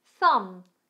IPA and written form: θʌm (Thumb)